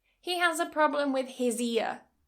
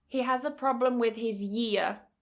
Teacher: You notice now I'm adding that y for the year. With his ear, with his year.